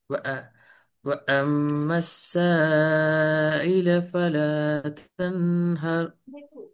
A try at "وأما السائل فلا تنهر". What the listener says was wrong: இந்த ஐ என்று வாரது பிழை. ஐ என்று வரக்கூடாது.